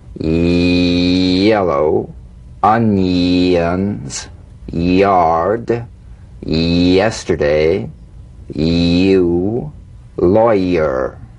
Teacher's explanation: a touch of the Y Buzz before another vowel e e feel the Y Buzz quickly cut off as it slides into the following vowel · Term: resonant Y